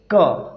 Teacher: जब आप बोलेंगे क तो इसकी जो आवाज आती है कंठ से आती है